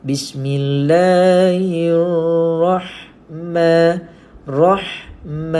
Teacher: Sebab apa gunakan istilah ha pedas? Sebab kita nak pastikan sebutan ha ini dinipiskan dan berangin